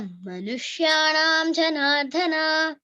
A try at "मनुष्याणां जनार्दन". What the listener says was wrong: జనార్దన అన్నావు కదా, ఆ ధాకు పొక్కిలేదు, జనార్దన అంతే. ధా కాదు, ధా లేదా, జనార్దన కాదు, జనార్దన. పొక్కిళ్ళ జనార్దన, మనుష్యాణం జనార్దన. అదొక్కటే అంతే, మిగతా అంతా బాగా చెప్పిన, ఫస్ట్ క్లాస్ గా ఉంది.